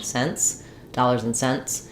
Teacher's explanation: you can think of them as being mostly the same because the T basically drops when we have an NT and S sound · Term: unreleased T